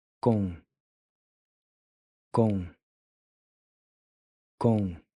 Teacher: the OM in com is pronounced with this nasal on sound. Com. Then the C is pronounced like the C in Bronco or Bianca in English.